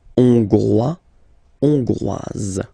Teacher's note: final S not pronounced for the masculine form, and then you pronounce it here for the feminine form